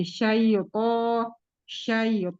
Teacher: huruf th itu tebal tapi tidak juga dipendam di dalam. Jadi s tetap keluar s tetap didorong keluar untuk syaranya.